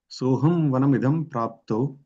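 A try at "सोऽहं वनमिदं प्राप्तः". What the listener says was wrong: Praptaha. Nirjan, meaning prapto nirjanam. If you read continuously, then it becomes sandhi and it becomes prapto nirjanam lakshmananvitaha. But if we break, then we have to remove sandhi. So, soham vanamidam praptaha.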